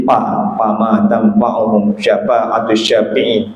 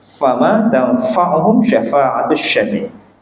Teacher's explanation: Kalau pa, dia tutup bibirnya.